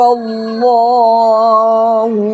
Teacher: لام پر کھڑا زبر ہے، ایک سیکنڈ کھینچیں گے